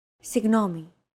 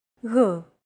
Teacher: it's like a very soft continuous and loosely held G almost as if you're gargling but don't make it sound too throaty